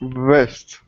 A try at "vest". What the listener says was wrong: So it's got to be longer because otherwise it sounds like a W to us. So listen to me. Vest. So notice how you have to elongate the sound. You've got to stretch it out just a little bit. It's got to really vibrate for it to sound natural. Okay, and if you need to, put your fingers there to feel the vibration.